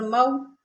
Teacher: بلکہ واو ساکنوں سے پہلے زبر تو واو لین ہوتی ہے، واو لین کو نرمی اور جلدی کے ساتھ پڑھتے ہیں